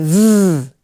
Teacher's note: put your hand on your voice box and say hmm you got anything going on down there it should be a little bit of a rumble it's a voiced sound